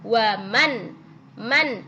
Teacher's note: nun sukun bertemu dengan Hamzah ya ya nunnya dibaca jelas nunnya kedengaran jelas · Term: idhar halqi